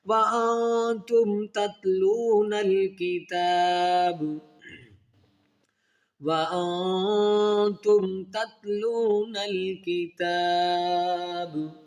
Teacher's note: میم ساکن کے بعد با اور میم کے علاوہ حروف ہے، یعنی ورڈ تا ہے، تو یہاں پر پھر غنہ نہیں کیا، اظہار کیا جائے گا